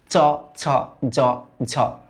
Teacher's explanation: এগুলাকে না ঘৃষ্ট বলা হয়, একটু ঘষা খায়। দেখো দেখো চ, ছ, জ, এগুলো না তোমার জিভের যে ডগাটা, এটা তোমার কোমল তালু শক্ত তালুর সাথে একটু ঘষা খায়, এরকম ফিল হয়।